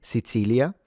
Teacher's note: some people that might pronounce the C as a ts, Sicilia. This happens more in the northeast or some areas.